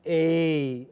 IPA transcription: ei